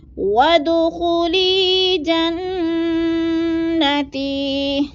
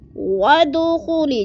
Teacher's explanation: ود کی دال کو بھی ہم نے ساکن کرنا ہے کیونکہ یہ حروف قلقلہ میں سے ہے